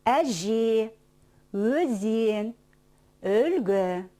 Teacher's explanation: в словах Әже, Өзен, Өлгі есть только мягкие гласные звуки, поэтому и слова звучат мягко.